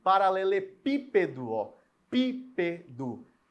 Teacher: o PI é sílaba tônica e ela é anti-penúltima